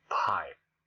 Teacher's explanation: Pipe, aspirated with pressure of the air. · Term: aspirated P